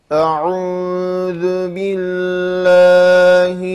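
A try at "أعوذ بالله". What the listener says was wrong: Ya, ağzını açmayınca imal olur. Bir açmadım hepsi aynı. B, T, S hep gider böyle. Onun için emenü billâhi.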